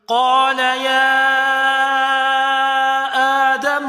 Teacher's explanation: یہاں پر مد منفصل ہے، اس کو کھینچ کر پڑھنا ہے